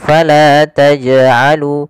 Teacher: Maka jangan kita baca dengan bacaan taj'alu yang artinya dia tidak mantul. Maka harusnya jim harus mantul. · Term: qalqalah